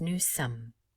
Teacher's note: new sum again we do not pronounce the final s and because there are two m's here we will pronounce them and we will not make the o nasalized